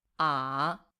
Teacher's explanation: When pronounced in isolation, it starts low and dips before rising again. 214. Impion. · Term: Tone three